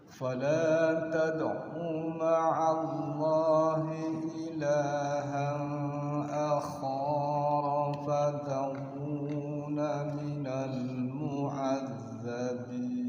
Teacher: Awas u-nya pendek. Tad'u ma'a langsung.